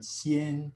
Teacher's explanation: in anticipation of the n coda the velum is going to lower and the vowel will have nasal resonance on it